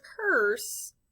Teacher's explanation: I don't really hear the U because the R kind of takes over that sound. So even though it's P-U-R-S-E, the U-R is controlled by the R.